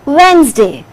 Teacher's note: you are not going to say it wednesday it is wednesday d is silent only two syllables will be there